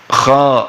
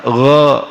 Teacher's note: Kemudian ada lagi lawannya adalah isti'la. Isti'la menaikkan pangkal lidah sehingga bunyinya agak besar.